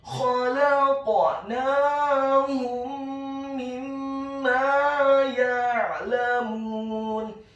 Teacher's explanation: Kemudian kata ya'lamun, Huruf ya-nya dibaca tipis, tarqiq, fathah 1 harokat. Huruf ain-nya ditekankan keluar dari tenggorokan bagian tengah dengan harokat sukun. Huruf lam-nya dibaca tipis, fathah 1 harokat.